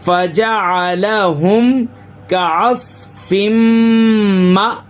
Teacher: فا زبر فا، جیم زبر جا، فجا، عین زبر آ، فجا آ، لام زبر لا، فجا علا، حامیم پیش ہم، فجا علا ہم، کاف زبر کا، عین صاد زبر اس، کا اس، فا میم دو زیر فم، کا اس فم، میم حمزہ زبر ما. اب دیکھیں حمزہ کے اوپر سکون ہے تو یہاں پہ تھوڑا سا جھٹکا دیں گے